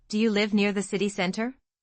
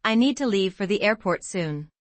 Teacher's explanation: Vowel length distinction between live and leave.